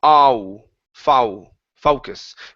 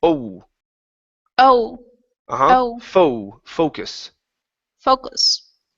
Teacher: You're saying ow, foul, focus. Instead of ow, it's oh, oh. So don't open up your mouth as wide.